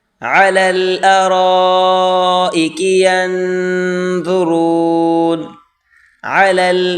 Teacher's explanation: عین کو گلے سے نکالیں زور لگا کر، علی الارائک، یہاں پر مد ہے، بڑی مد، اس کو 4 الف کی مقدار کھینچ کر پڑھیں۔